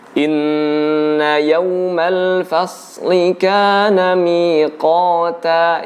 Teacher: shad itu huruf lidah. Lidah yang kemudian mendekat dengan gusi atas, bukan huruf bibir. Jadi tidak perlu menggerak-gerikan bibir kita, ya. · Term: huruf shad